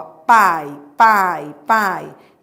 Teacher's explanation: eu vou dar vogal a pra semivogal. Então é um ditongo decrescente.